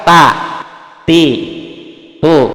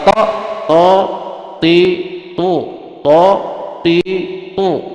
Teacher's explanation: Kalau ta walaupun dia ke gusi sama makhrajnya, tapi posisi lidahnya jatuh ke bawah.